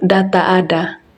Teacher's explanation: Hambatan letup alveolar bersuara